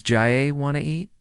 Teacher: Sometimes letters are dropped like the T in want to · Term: connected speech